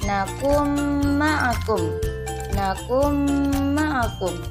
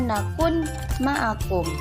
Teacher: dia bacaan Idgham Bighunnah dileburkan kepada huruf yang sesudahnya seolah-olah huruf sesudahnya itu bertasydid